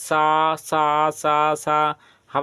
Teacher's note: जैसे मुख से गर्म हवा निकलती है उनको क्या बोलते हैं उमी व्यंजन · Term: ऊषम व्यंजन